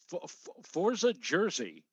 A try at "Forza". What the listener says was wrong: Roll your R. You're an Italian. Roll your R. It's Forza.